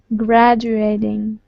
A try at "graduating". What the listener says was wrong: It's the U problem. It's the U. Gradu.